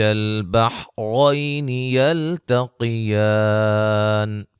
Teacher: را کو موٹا ادا کریں گے، اور را کو یہاں موٹا، یا لین ہے، قاف کو موٹا، الف مدہ ہے